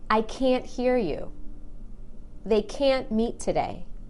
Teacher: But when I say can't, I stress that A and make it really long.